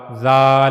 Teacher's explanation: फिर जाल के बारे में हमने पढ़ा कि जबान की नोक का ऊपर वाला हिस्सा ऊपर के अगले दो दांतों के किनारों से जाकर जब मिलेगा तो वहां से जाल अदा होगा। जाल और हमने यह भी पढ़ा कि जाल को अदा करते हुए आवाज में नरमी होनी चाहिए। · زبان کی نوک کا اوپر والا حصہ اوپر کے اگلے دو دانتوں کے کناروں سے جا کر جب ملے گا تو وہاں سے ذال ادا ہوگا، ذال۔ اور ہم نے یہ بھی پڑھا کہ ذال کو ادا کرتے ہوئے آواز میں نرمی ہونی چاہیے، ذال ذال۔